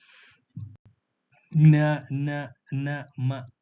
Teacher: ಇವುಗಳ ಉಚ್ಚಾರಣೆಗೆ ಮೂಗಿನ ಸಹಾಯ ಬೇಕಾಗಿರುವುದರಿಂದ ಇವುಗಳನ್ನ ಅನುನಾಸಿಕಗಳು ಅಂತ ಹೇಳಿ ಕರೀತೀವಿ